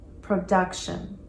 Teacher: Notice the emphasis on that second syllable, production.